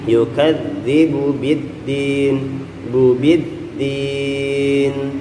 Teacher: bu-nya sama biddinnya langsung disambung aja